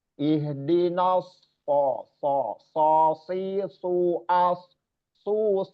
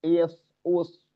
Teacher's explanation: dengan sifat istillanya yaitu mengangkatnya anak lidah ke langit-langit atas bagian dalam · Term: shod